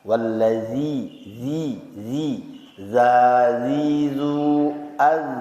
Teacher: Yang pertama wallazi, ya, za di sini adalah za yang keluarnya dari ujung lidah menyentuh gigi seri atas. Jadi za di sini tidak menyertakan udara kalau kita baca hurufnya